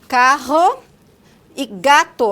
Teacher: K e G, que são oclusivas velares, ou seja, a obstrução do trato é feita com o dorso da língua na região do véu palatino